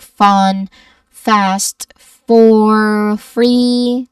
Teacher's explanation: So it's a breathy sound made by your top teeth lightly touching your bottom lip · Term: F sound